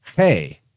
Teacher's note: there's a big aspirate push with the H sound